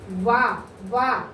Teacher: ఏంటమ్మా దంతాల నుంచి ఓష్యాల నుంచి పుట్టుకొచ్చిన అక్షరాలు మనకి ఏమున్నాయి వ అంటే ఈ మన యొక్క దంతాలు ఎక్కడికి అవుతున్నాయి పెదాలు తగిలి వస్తున్నాయి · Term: దంతోష్యము